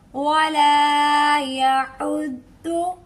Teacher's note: Side वाली जुबान का किनारा जो लास्ट वाली हमारी दाढ़ें हैं वहां से टच करते हुए इस मखरज को हम अदा करेंगे, ठीक है। इसको ज़्वाद नहीं पढ़ेंगे, वाद नहीं पढ़ेंगे, बल्कि दौद पढ़ेंगे।